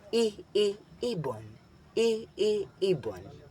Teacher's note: Binibigas ng mataas ang posisyon ng dila at harap ang bahagi ng dila na ginagamit.